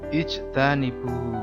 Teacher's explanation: Jim sukun itu adalah bacaan qalqalah sukun. Cara bacanya sedikit dipantulkan.